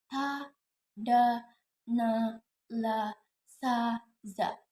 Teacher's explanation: Alveolar sounds ta, da, na, la, sa, za. These consonant sounds are made when the tongue tip contacts the alveolar ridge part just behind the teeth